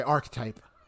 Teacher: I might say it so fast you might even think I'm not saying three syllables. So it sounds like I'm saying two.